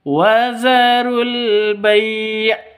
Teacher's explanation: Wazarul bai' panjang boleh 2, boleh 4, boleh 6 ketukan karena mad lin atau mad layyin